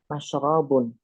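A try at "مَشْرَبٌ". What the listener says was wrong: mashrabun bukan mashribun. Ya kan?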